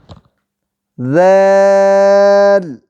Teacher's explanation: زبان کی نوک جب اوپر والے دو دانتوں کے سرے سے لگے تو ذال ادا ہوتا ہے